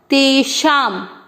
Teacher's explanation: पहला चरण तेषा, शब्द पूरा होने के बाद अनुस्वार आधा म